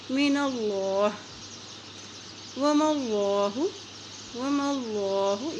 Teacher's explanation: اللہ کے نام سے پہلے زبر آ گیا ہے تو اس اللہ کا نام موٹا ادا کیا جائے گا